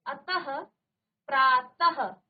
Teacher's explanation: त के बाद आपने ह कहा वह भी आधा ह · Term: विसर्ग